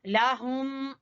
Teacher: हा अक्सा हलक से, हलक का सबसे नीचे वाला जो हिस्सा है वहां से हा